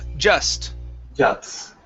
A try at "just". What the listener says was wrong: Now switch the S and the T. Right now you're saying juts.